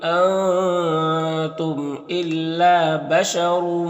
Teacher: را کو اوپر دو پیش تو را کو پر پڑھیں گے. اس تنوین کے بعد میم حروف یومین میں سے تو ادغام ناقص ہوگا.